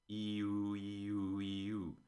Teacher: the back of your tongue pulls back around a centimeter for U and goes forward for E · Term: vowel backness